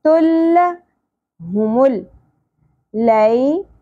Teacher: ا یا یہاں پر بھی سنگل زبر ہے تل دو پیش تنوین کے بعد حرف لام ہے تو ادغام کرنا ہے ملانا ہے غنہ کے بغیر